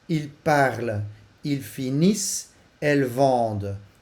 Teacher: Dat is in de présent, de derde persoon meervoud. De uitgang ent wordt gewoon als een doffe uitgesproken. En die ent die verdwijnt.